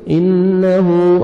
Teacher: نون مشدد غنہ, نون مشدد ہے, غنہ کریں گے. انہو, ہا کو ضمہ واو صغیرہ ہے, واو مدہ کا قائم مقام ہے. 1 سیکنڈ آپ نے آ کو کھینچنا ہے